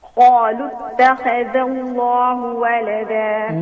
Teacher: notice that the dhal is muraqqaqa. It is not like the kha. Okay. So the kha is mufakhama, but do not sacrifice the dhal for the sake of the kha.